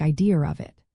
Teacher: Even if a word like idea ends in a vowel sound, a Bostononian might add an R if the next word starts with a vowel, connecting idea and of to sound like idea of it. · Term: linking RS